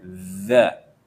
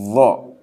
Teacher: kalau dza itu yang menempel dengan gigi atas itu hanya ujungnya saja, dza. Tapi kalau dha lidahnya melebar.